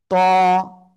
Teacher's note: জিহ্বার আগা উপরে 2 দাঁতের গোড়ায় লাগাবো, লাগিয়ে একটু মোটা আওয়াজে এক আলিফটা নিয়ে উচ্চারণ করব।